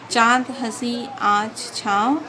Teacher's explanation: इसके उच्चारण में वायु नाक और मुख से एक साथ बाहर निकलती है। इसका प्रयोग चंद्र बिंदी के रूप में किया जाता है, जैसे चांद, हंसी, आँच, छाँव आदि। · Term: अनुनासिक